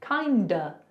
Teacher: we're turning that of into a schwa. So it's not kind of, it's kinda, schwa, I'm kinda hungry.